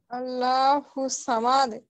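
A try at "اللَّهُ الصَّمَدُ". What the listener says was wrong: আল্লাহ মোটা করতে হবে আপা আরো মোটা করতে হবে হ্যাঁ আপনি মনে পড়েন নাকি আল্লাহ স্পষ্ট করেন আল্লাহু সামাদ সামাদ এমন যেন না হয় আপা আল্লাহু সামাদ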